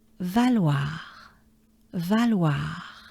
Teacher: So there's a French A, A, A, A. And we have the sound wa, wa, wa, wa, wa, wa. That ends with a French R.